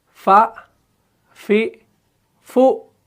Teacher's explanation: हरफ फ़ा जो है ये मुरक्कक है, यानी ये बारीक पढ़ा जाने वाला हरफ है। इसको बिल्कुल हल्का पढ़ना है, इसको मुंह भर के नहीं पढ़ना है।